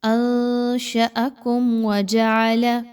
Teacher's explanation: میم ساکن کے بعد واو آ رہی ہے تو آپ نے یہاں پہ میم پہ نہیں رکنا۔ بہت سے لوگ ہر میم ساکن کے اوپر رک رہے ہوتے ہیں، ایسا کرنا درست نہیں ہے۔